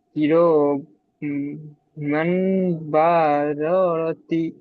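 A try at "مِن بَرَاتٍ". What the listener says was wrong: কিরামিম বারারাতিন। মিম হবে, মিম। দুটো মিম উচ্চারণ করতে হবে, কেননা এই মিম তানমিনকে মিমের দ্বারা পরিবর্তন করতে হবে, তাহলে দুটো মিম হয়ে যাবে। তাহলে কিরামিম বারারাতিন। গুণনা করেন ওখানে মিম, মিম কুরা, কিরামিম।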